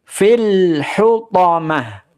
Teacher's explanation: lam sukunnya jangan sampai ada pantulan jangan sampai ada qolqalah fil hutom jadi izhar jelas Ya jelas suara dari lam sukunnya